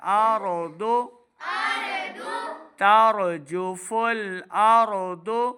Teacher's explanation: ضاد بھی حروف مستعلیہ سے ہے, ہم نے ضاد کی آواز کو موٹا ادا کرنا ہے. ارض ترجف الارض یوم ترجف الارض.